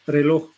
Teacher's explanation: es líquido vibrante múltiple